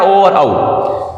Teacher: फिर है ओदौतो यानी कि कंठोष्ठीय, कंठ और ओष्ठ होठ दोनों से मिक्स से निकलेगा ओ और औ